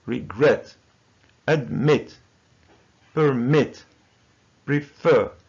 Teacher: the verb is two syllables. Admit, permit, prefer, occur, regret. So there are two syllables. But the second syllable is stressed. So we say regret, not regret.